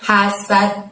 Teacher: Hasadnya dalnya disukunkan atau terjadi waqaf maka terjadilah qalqalah kubro dan harus kita mantulkan ya.